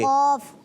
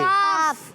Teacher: تالو کے نرم حصے سے جب زبان کی جڑ ٹکراتی ہے تو ادا ہوتا ہے قاف. قاف. اور زبان کی جڑ سخت حصے سے ٹکراتی ہے تو ادا ہوتا ہے کاف